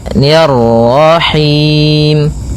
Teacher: Kemudian mani ada bacaan mad thabi'i yaitu fathah bertemu alif ni rarahim. Kemudian ni tipis ketemu dengan ra yang tafkhim. Ro tebal maka kita baca dengan bacaan tebal rnya ni rahim. Kemudian pada lafal him ada bacaan mad arid lukun yaitu mad yang terjadi disebabkan karena adanya sukun arid yaitu sukun yang timbul karena wakaf.